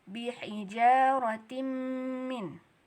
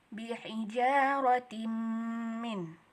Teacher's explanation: tanwin in, tin bertemu dengan mim. Kita masukkan dia ke dalam mim, berarti idgham. Dia berdengung nggak? Iya, berarti idgham bigunnah gitu. Panjangnya 2 harkat juga.